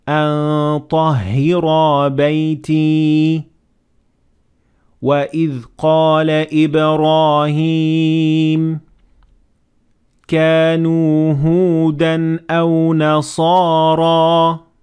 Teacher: in all of these examples, the ra was a full mouth letter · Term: full mouth Ra